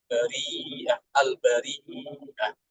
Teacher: Jadi dibaca panjang 4 harokat. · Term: Mat wajib